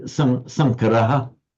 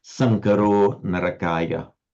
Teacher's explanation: It would be Sankaraha, but with Sandy, with the following voice consonant, the final aha becomes O. That's why it's Sankaro Narakaya.